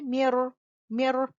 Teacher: इसमें नून को उसके अगले हर्फ में मुकम्मल तौर पर मिलाकर पढ़ेंगे और इसमें कोई गुन्ना नहीं होगा। यानी मुकम्मल तौर यानी इसका नून का मखरज और नून का गुन्ना दोनों मर्ज हो गया है और इसमें कोई गुन्ना भी नहीं होता। · हम नून का मखरज और नून का गुन्ना दोनों रॉ में मर्ज कर दिए और नून का कोई असर बाकी नहीं है यहाँ पर। तो इसीलिए हम इसको कैसे पढ़े, मिर मिर, एज इफ नून एग्जिस्ट ही नहीं करता है यहाँ पर। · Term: इदगाम बगैर गुन्ना